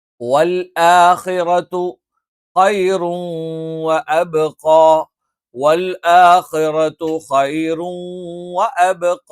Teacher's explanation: വൽ ആഖിറതു, ആ എന്നുള്ള ഉച്ചാരണം തൊണ്ടയുടെ താഴ്ഭാഗത്തു നിന്നാണ്. ആഖിറതു, ഖ എന്നുള്ള ഉച്ചാരണം തൊണ്ടയുടെ ഏറ്റവും മുകൾ ഭാഗത്തു നിന്നാണ്.